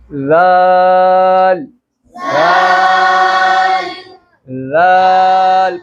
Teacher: जब आप लाल की अदायगी करोगे तो जबान को बाहर निकालकर दांतों के साथ लगाओगे, मेरे को देखो, लाल लाल लाल।